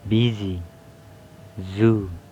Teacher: There is voice alveolar fricative